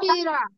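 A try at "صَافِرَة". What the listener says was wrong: হ্যাঁ হবে না, স হবে আপু।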